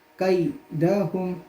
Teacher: یہاں جو ہا ہے اس کو جو سینے کے قریب کا حلق کا حصہ ہے اس سے ادا کریں گے قیدہم، فا یا زیر فی، یا مد ہے اس لیے ایک الف کے برابر اس کو کھینچ کے پڑھیں گے.